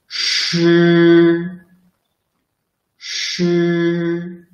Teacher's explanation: The sound is produced by rolling up the tip of the tongue very close to the hard palate without totally blocking the air and letting the air squeeze out through the channel.